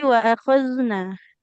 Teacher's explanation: Nunnya jangan panjang. Dia berharokat fathah, tidak ada alifnya.